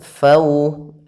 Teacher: untuk menyempurnakan makhraj daripada huruf wau dan sifatnya yaitu kita monyongkan bibir kita ke depan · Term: bacaan Lin